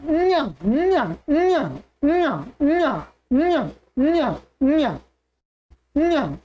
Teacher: अब इसमें क्या होगा, ये जो च वर्ग का है ये, तो इसके उच्चारण में क्या है? तालु और प्लस नासिका दो हो जाएंगे इसमें, तालु और नासिका।